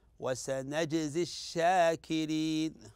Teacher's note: تلاحظ هنا جيم على سكون وهذا من حروف القلقله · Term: قلقله وسطى